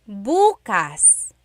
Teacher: emphasis is on the first syllable that means tomorrow.